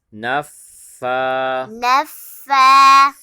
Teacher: نون کے بعد فا کے اوپر کھڑا زبر ہے تو فا کو ایک الف کی مقدار کھینچ کے پڑھیں گے۔ نون فا زبر نف، فا کھڑا زبر فا، نون فا زبر نف، فا کھڑا زبر فا، نف فا، نف فا، سا کے اوپر کھڑا زبر ہے، ایک الف کی مقدار کھینچ کے پڑھیں گے۔